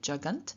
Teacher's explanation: Here in jagat, when we have a nasal entered before the stem final consonant, i.e. before t, this nasal appears as the dental nasal before the dental stop, so we get jagant, and then we get an e added, and so the nominative, vocative, accusative plural form of jagat is jaganti.